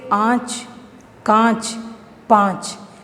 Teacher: जिस वर्ण का उच्चारण मुख और नासिका दोनों से होता है तो उसे अनुनासिक कहते हैं।